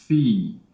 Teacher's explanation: When we say phi, our lips don't quite come all the way together, but they come very close together.